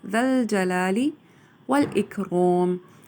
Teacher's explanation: ہے وہ لام کیونکہ ساکن ہے الجلال کا، اس وجہ سے ذال کی جو حرکت ہے اس کو لام کے ساتھ جوڑ دیا جائے گا ، ذا الجلالی والاکرام، را کو پر پڑھا جائے گا اکرام